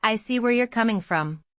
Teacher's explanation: The word coming carries the stress.